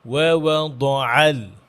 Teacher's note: ওয়াওয়া দুটা ওয়াও ঠোঁট গোল করে, আর আইনটা মিডল অফ দ্য থ্রোট।